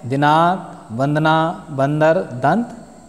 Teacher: और इसके विपरीत, जिस ध्वनि का उच्चारण करते समय वायु नाक और मुहां दोनों से बाहर निकलती है, उसे अनुनासिक कहते हैं। अनुस्वार जिनके उच्चारण में हवा नाक से निकलती है